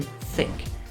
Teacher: for the TH sound in think, your tongue should be between your teeth